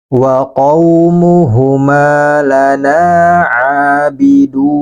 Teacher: Abidun ini panjangkan 4 harokat. Bisa 2, bisa 4, bisa juga 6. Kalau dia waqaf. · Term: mad arid lisukun